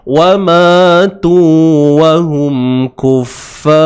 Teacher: Ra itu kita matikan dengan bunyi yang tebal.